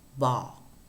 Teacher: you can feel that there is vibration of the vocal folds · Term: voiced bilabial sound